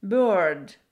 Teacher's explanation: Тоже звук «р» можно не произносить, но сейчас модно его произносить